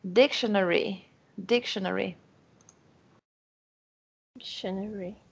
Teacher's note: palavras longas, onde a primeira sílaba é a mais forte, aí você tem que ter um fôlego para ir até o final da palavra, né?